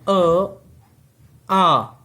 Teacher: कंठ से उच्चारित होने वाले स्वर